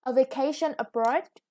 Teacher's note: Yeah, with the vacation, the second syllable is stress, and abroad, the stress is on the second syllable